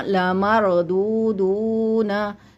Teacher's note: मरदू दाल के साथ वाव है थोड़ा सा लंबा, एक अलिफ के बराबर, क्योंकि हरूफ मद्दा हो गया।